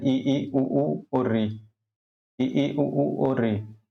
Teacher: संवृत जिनमें जो है मुख जो है पूरी तरह बंद रहता है और इनके उच्चारण में जो है मुख जो है पूरी तरह से बंद रहता है।